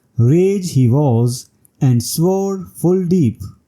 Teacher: In The Canterbury Tales, the line, "Rage he was, and swore full deep." This line lacks the initial unstressed syllable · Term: acephalous line